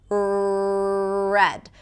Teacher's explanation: And in American English, the tongue doesn't touch the upper pallet. It's pulled back. And this is the main thing I want you to practice or focus on where there is no contact. · So in each one of those R's, the tip of the tongue touches the upper palate. And in American English, the tongue doesn't touch the upper palate. It's pulled back.